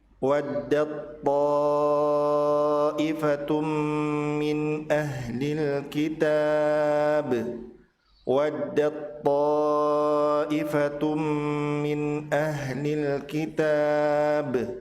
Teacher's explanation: Persamaan makhrajnya adalah ujung lidah dan pangkal gigi atas. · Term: idgham mutajanisan